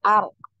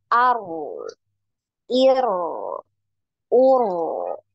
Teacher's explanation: Ar ya, jadi dialirkan ar. Pertama digetarkan sekali baru dialirkan ar.